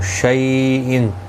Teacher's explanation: شیء یا لین ہے، تھوڑا نرمی کے ساتھ کھینچ کر ادا کریں گے